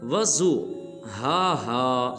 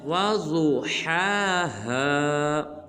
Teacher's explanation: بعض مسلمان اس حرف کو پڑھتے ہیں وضو ہا، یہ بالکل غلط ہے۔ واو کے بعد جو ضاد ہے اس کو پر ادا کریں گے، اس کے بعد ہا کے اوپر کھڑا زبر ہے، اس ہا کو ایک الف مقدار لمبا کریں گے۔